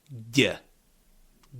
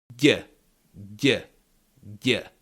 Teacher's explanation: The middle of your tongue touched the palate. It kind of covered the palate and stopped the air.